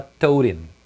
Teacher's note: O him também perde o H. Então fica tod.